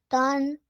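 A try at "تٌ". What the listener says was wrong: No. It's the un sound which you need to add in the letter ta. Tun. That's it. This is the sound.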